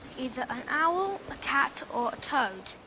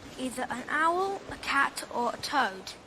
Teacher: every item except the last one is realized in a rise